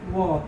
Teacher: जिसका उच्चारण दांत और ओठ से होता है उसको दंतुष्ठ · व केवल वही है जिसका उच्चारण दांत और ओठ दोनों से होता है